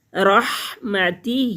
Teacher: ہا کے نیچے کھڑی زیر ہے، ایک الف کے برابر کھینچ کر پڑھیں گے